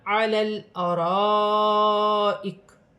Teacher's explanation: لام ساکن ہے، لام کو لام کے ساتھ ملا کر پڑھا جائے گا